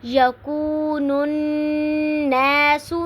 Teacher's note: یکو پہ واو مدہ ہو رہی ہے کیونکہ واو ساکن سے پہلے پیش آ رہی ہے، اور نون ناس نون کے اوپر غنہ ہو رہا ہے کیونکہ نون مشدد ہے، تو آواز کو تھوڑی دیر کے لیے ناک میں ٹھہرائیں گے۔